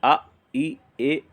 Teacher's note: अब आप इनको जब बोल के देखोगे तो आपको पता चलेगा कि इसमें जो ओ है ये पीछे से बोला जा रहा है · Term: पश्य स्वर